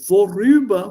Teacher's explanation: And a small thing before we go ahead, you have a small R in between. Und das kleine R kommt inzwischen, weil es hier zwei Vokalen gibt.